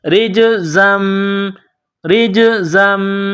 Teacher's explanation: را کو جیم کے ساتھ ملائیں گے، جیم ساکن ہے تو یہاں پر قلقلہ کرنا ہے۔ · را جیم زیر رج، ز میم دو زبر زم، زا کو میم کے ساتھ پلس کرنا ہے۔ میم کے اوپر تشدید ہے تو یہاں غنہ کریں گے، آواز ناک میں چھپائیں گے۔